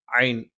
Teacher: തൊണ്ടയുടെ മധ്യഭാഗത്തു നിന്നാണ്